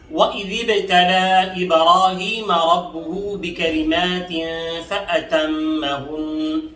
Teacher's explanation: وَإِذِ ابْتَلَى کی با پر قلقلہ کر لیں گے